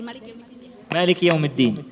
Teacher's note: huruf dal dibaca dengan suara tertahan dan udara tertahan